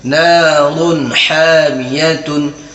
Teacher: کیوں ہوگا, کیونکہ تنوین کے بعد حروف حلقی میں سے حا آ رہا ہے, اس لیے یہاں بھی اظہار ہوگا. یہاں بھی ہم نون کی آواز کو ظاہر کر کے بلا غنہ کے جلد پڑھیں گے.